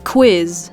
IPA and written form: ˈkʋɪs (Quiz)